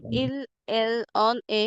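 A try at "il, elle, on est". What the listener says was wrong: না অন এখানে পজ নেবেন না হ্যাঁ আমি পজ নেইনি কিন্তু দেখেন ইল এল অনে হ্যাঁ অনে অনে কেন বলছি এই যে লেটার এই ওয়ার্ডটা লিখে দিয়েছিলাম যেটা ওএস তে কি হবে এ সাউন্ড হবে জাস্ট লিখে দিয়েছিলাম কিন্তু দুইটা ওয়ার্ড না এ হবে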